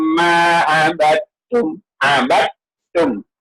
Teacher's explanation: Kita baca yang sabdu iaitu huruf ta yang sabdu. Dal tidak dibaca langsung.